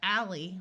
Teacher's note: Al L at the end of a word usually says all before a vowel it has the short a sound of Al instead of the broad a sound of all